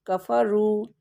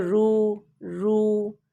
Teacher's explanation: واو کو لمبا کر رہے ہیں تو یہ واو مدہ ہو گیا